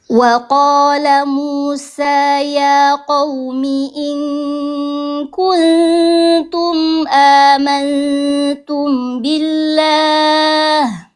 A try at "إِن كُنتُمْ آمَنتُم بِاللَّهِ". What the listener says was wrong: Hati-hati mim sukun ketemu ba. Fawi, ditahan ya, kurang ditahan tadi terlalu amantum bi. Nah, tahan dulu. Amantum billah ya.